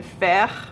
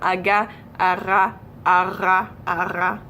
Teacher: One of them is to start off by saying aga, starting with the G sound and slowly softening that G and bringing it a little bit further back within your throat. So slowly transition from aga, ara, ara, ara. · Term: weird R sounds